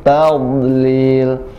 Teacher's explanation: Tadlil tidak dipantulkan, huruf dad tidak memantul, tapi dia mempunyai sifat istitalah, memanjang, jadi agak dipanjangkan sedikit